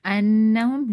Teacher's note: you have to do gunna here, noon mushaddad, so you have to do gunna here.